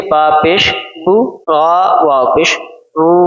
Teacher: बा पेश हु को खींचेंगे नहीं वरना मजहूल हो जाएगा। इसको हम बगैर खींचे बा पेश हु, रा वाव पेश रू, गुरु।